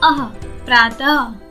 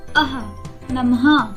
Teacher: इसमें ह का स्वर निहित होता है। इसे विसर्ग कहते हैं।